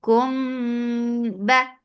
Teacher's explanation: And there is ikhfa shafawi. After mim sakin, there is ba. So there is ikhfa shafawi now.